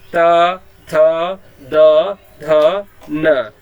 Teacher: तो ये जो आपका त, थ, द, ध, न है जो है, तो आप देखेंगे आपकी जिह्वा जो है, आगे वाली जिह्वा जो है आपके दांत से स्पर्श हो रही है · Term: त वर्ग